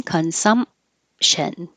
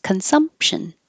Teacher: You don't say the P, you just close your lips for the N.